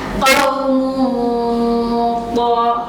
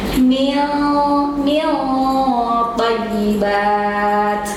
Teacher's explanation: bo termasuk yang harus ditebalkan bunyinya